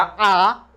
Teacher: मुंह पूरा खुलेगा, मुंह खुलेगा, होठ आगे नहीं निकलेगा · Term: अवृत्ताकार